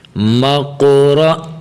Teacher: یہاں میم کو قاف کے ساتھ ملائیں، قاف کو بھی موٹا کریں اور را کو بھی موٹا کریں